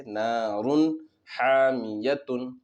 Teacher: نون کو ظاہر کر کے بلا غنہ کے جلد پڑھیں گے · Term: اظہار